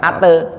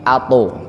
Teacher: jadi suara to itu bukan ate, tapi ato, agak naik dia. Ya, karena huruf tebel, huruf yang vokalnya o.